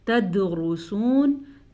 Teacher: دال کے اوپر ساکن آنے کی وجہ سے دال پہ جھٹکے کی کیفیت ہوگی، اسے ہم کہتے ہیں قلقلہ۔